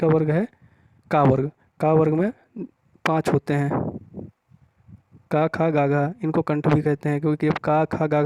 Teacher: आई है और को देखेंगे आपका का ग ग बोल के तो जुबान का सबसे पिछड़ा वाला भाग जो है वो स्पर्श करता है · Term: स्पर्श व्यंजन